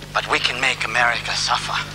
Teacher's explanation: a slight nasal sound. He speaks Arabic with a French accent.